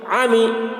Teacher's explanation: میم زیر می، میم کے نیچے زیر ہے، زیر کو جلدی پڑھیں، تھوڑا بھی نہ کھینچیں. معروف پڑھیں، مجھول آواز سے بچیں